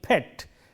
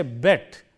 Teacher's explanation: Between these two words, the difference has come about just by changing p into b. The p is voiceless, whereas the b is voiced.